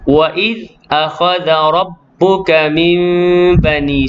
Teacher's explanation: nun mati bertemu dengan ba dengung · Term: iqlab